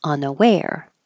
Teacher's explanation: Unaware, the stress is on the end, unaware.